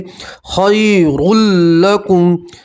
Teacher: तनवीन का इदगाम होगा लाम के अंदर मगर गुन्ना नहीं करना है